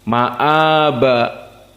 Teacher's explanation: Maka hukumnya di sini adalah mad badal karena asalnya ma'aba. Maka jumhur membaca mad badal dengan dua harokat saja.